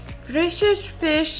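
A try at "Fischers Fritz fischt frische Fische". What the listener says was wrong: No, Fischers. Fritz. Fischt. So you have no R.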